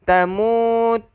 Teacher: Bila di atasnya ada sabdu yang bentuk W kecil ni, kita panggil dia sabdu. Bila di atasnya ada sabdu, automatik kena dengung. Yang dipanggil wajibal gunnah. Wajib dengung. Berapa harokat wajib dengung? 2 harokat.